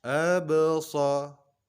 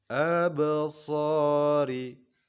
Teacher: Dan ini adalah qalqalah sughra karena berada di tengah-tengah kata. Cara membacanya dipantulkan seolah-olah berharokat fathah dengan pantulan yang ringan. Absa, bukan dengan absa, tetapi dengan lembut.